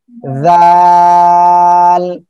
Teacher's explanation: জিব্বার আগা সামনের উপরে এই দুই দাঁতের আগার সঙ্গে লাগিয়ে একটু নরম করে উচ্চারণ করতে হবে, জাল এভাবে হবে, ঠিক আছে?